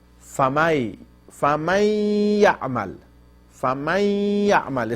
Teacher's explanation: still I am pronouncing half of Noon in my nose